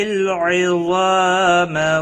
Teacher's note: ضا حروف مستعلیہ میں سے پور پڑا جائے گا۔ الف مدہ بھی ہے، ایک الف کے برابر کھینچ کر پڑھیں گے